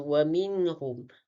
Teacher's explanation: Pada perkataan wa minhum di mana perkataan nun dengan ha, yang mana hukum tajwidnya izhar halki. Cara bacaannya menjelaskan sebutan nun sukun tanpa dengung bertemu huruf ha.